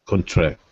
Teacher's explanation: when it's the verb, the stress shifts to the end, and it becomes, and that O turns into a schwa, and it becomes contract.